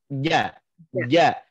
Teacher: itu makhraj ja, itu adanya di tengah-tengah lidah